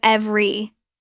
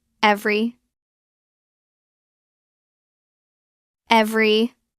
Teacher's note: Drop the middle e. It becomes every. Two syllables.